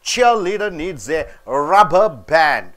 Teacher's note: Cheer is a noun. Leader is a noun. You are stressing on cheer.